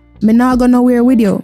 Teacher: We often omit the voiceless TH sounds from words ending in TH.